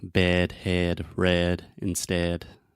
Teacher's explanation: the sound is more closed and more to the center than the a sound